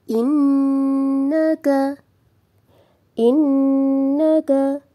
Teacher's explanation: inaka innaka innaka ada Nun tahdid dihukumi dengan bacaan tajibul Huna cara membacanya kita dengungkan serta ditahan tiga harakat